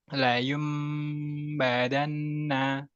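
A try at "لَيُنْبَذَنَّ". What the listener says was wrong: Kurang dengung. Layum badanna.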